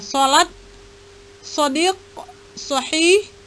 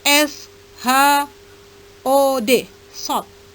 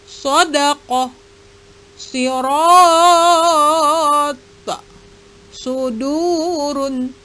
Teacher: huruf sod adalah sedikit mendesis dengan angin keluar dari mulut